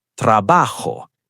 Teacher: Where's the stress? Pause. Second to last syllable. Trabajo. Ends in a vowel, so second to last.